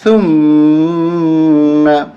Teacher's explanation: اور یہاں زبان نکال کے پڑھیں گے، اس کو ہمیشہ زبان نکال کے ہی پڑھا جاتا ہے۔